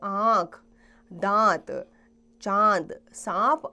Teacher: चंद्रबिंदु की ध्वनि को अनुनासिक कहा जाता है। उसका उच्चारण नाक और गले दोनों से होता है।